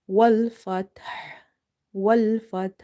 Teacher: ha is again from the middle of the throat. Okay, in order to make this ha exactly coming out from where it needs to be, you need to open the mouth wide and you have to exhale the air out.